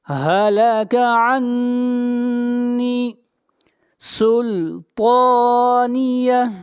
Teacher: طا کو موٹا پڑھیں گے، طا حروف مستعلیہ میں سے ہے